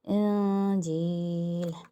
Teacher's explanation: جب تک ہم نون ساکن کی اخفا کر رہے ہیں ہمیں زبان کو مخرج سے ملانا نہیں ہے، ہمیں تھوڑا سا گیپ رکھنا ہے. انجیل.